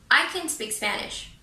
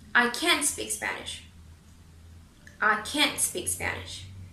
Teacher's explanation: if you are saying a negative sentence with can't, make emphasis in that word.